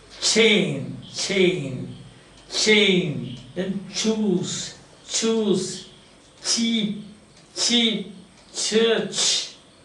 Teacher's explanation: the structure is complete closure and slow release. And you call this sound that comes or that you produce called affricates.